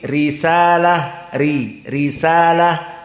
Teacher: adapun dalam keadaan kasrah maka dia dalam keadaan muraqoqoh